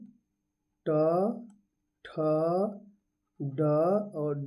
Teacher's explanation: मूर्धा से ट, ठ, ड बोला जाता है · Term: मूर्धन्य